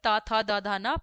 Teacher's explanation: त वर्ग का उच्चारण स्थान होता है दंत